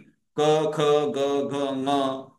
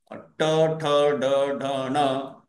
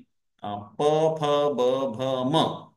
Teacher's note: सर्वेषु स्थानेषु पञ्चवर्णाः सम्पूर्णस्पर्शेण उच्चार्यन्ते